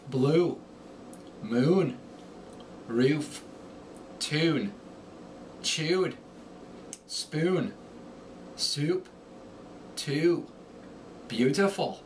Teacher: The long U rises in pitch.